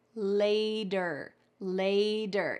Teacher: It's that T changing to a D.